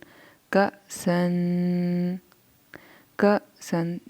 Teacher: हमज़ा जब हम पे होगा तो झटका लगाएंगे थोड़ा सा